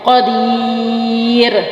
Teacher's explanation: را باریک پڑھی جائے گی کیونکہ را ساکن سے پہلے یہاں وقف ہو جائے گا ، را ساکن ہو جائے گی، را سے پہلے یا ساکن،